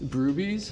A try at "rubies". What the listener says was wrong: No B. Well, one B, but not.